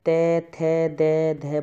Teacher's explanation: आपकी जो जीभ है वह दांत से टच करेगी